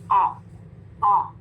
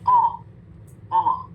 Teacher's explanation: जबान की जड़ को कहाँ लगाना है, नरम तालु को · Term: कॉफ